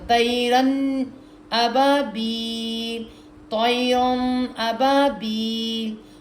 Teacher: نون پوری آواز تک نکلے، اظہار ہوگا نون کا